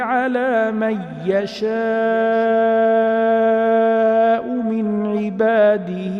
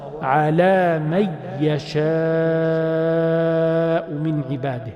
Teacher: we got rid of the noon and its sifa, its characteristic, which is the ghunnah. We done a complete tashdid.